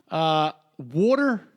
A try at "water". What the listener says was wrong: water. No, water. You did your Philadelphia water.